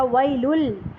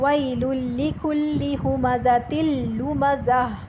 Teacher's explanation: بسم اللہ الرحمن الرحیم، ویل لکل ہمزۃ لمزہ، ویل، یہاں پر دیکھیں دو تنوین ہے، تنوین پیش والی لام کی، اور اس کے فوراً بعد آ رہا ہے لام، تو ہم نے ویلن کی جگہ اس کو پڑھا ویلل، لام سے ملا دیا